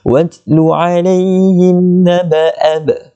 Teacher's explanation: Huruf ba itu menjadi qalqalah sughra. Jadi kita kena ada lantunan kecil di situ.